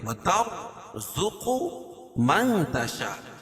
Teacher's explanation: وَتَرْزُقُ مَن تَشَاء، اخفاء حقیقی، کیونکہ نون ساکن کے بعد حروف اخفاء کے 15 حرفوں میں سے تا ہے تو یہاں ناک میں آواز کو چھپا کر پڑھیں گے